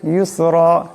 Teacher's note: এখানে রার উপর 2 জবর, তাই রাকে মোটা করিয়া পড়তে হবে